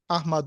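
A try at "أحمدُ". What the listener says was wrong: یہ آپ نے جو پڑھنا احمد یہ احمد نہیں پڑھنا، احمدو۔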